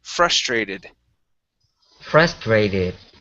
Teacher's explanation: the stress is at the beginning of this word